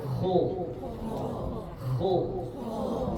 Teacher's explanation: masih ada angin walaupun anginnya enggak sederas syin